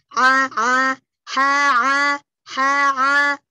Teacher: Di wastul halqi, tengah tenggorokan ya, tenggorokan kita tengah. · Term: Ain